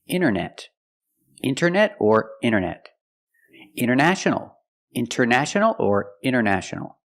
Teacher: you have NT in the middle the t is silent